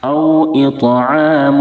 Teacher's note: طا کو پر بھی کریں گے کیونکہ طا حروف مستعلیہ میں سے ہے · واو ساکن سے پہلے زبر ہے، واولین ہوگی، واولین کو نرم آواز کے ساتھ معروف پڑھیں گے. اطو، طا حروف قلقلہ میں سے، اس لیے طا میں آواز لوٹ جائے گی، قلقلہ ہوگا.